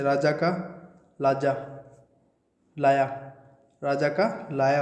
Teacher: इसमें र का ल हो जाता है और ज का ये हो जाता है